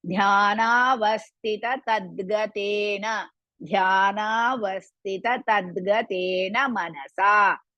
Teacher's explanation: Dhya is Mahaprana and Dirgha.